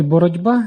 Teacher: І буває за дзвінкістю і глухістю приголосних, за м'якістю і твердістю вимови, за місцем і способом творення приголосних. Наприклад, у слові «боротьба» дзвінкий «б» впливає на попередній глухий «ті» і уподібнює його собі. Цей звук перетворюється на «ді», який також є дзвінким. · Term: асиміляція, уподібнення звука за ознакою дзвінкості